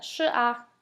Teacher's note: The a is a neutral tone, and that's when you mostly see neutral tones are at the end of sentences or phrases.